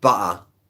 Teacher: I would say butter with a glottal stop